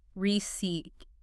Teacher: Two syllables. Stress on the second.